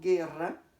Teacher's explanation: Cuando yo digo guerra, solamente estoy pronunciando la E. No estoy pronunciando la U. De tal manera que ahí no hay diptongo.